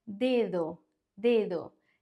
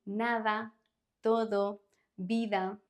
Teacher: The second D is softer because it is between vowels. So when the D is between vowels, it's going to have a softer sound, like in nada, todo, vida.